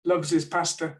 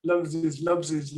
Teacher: you can see the linking for example loves his pastor where the h is probably going to be dropped loves his pasta so that loves his seems to join together